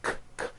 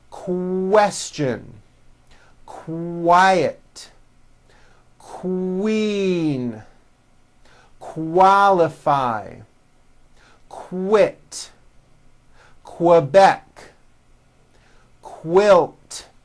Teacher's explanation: Q sounds are made with the K sound, k, k, and the W sound, w, put together.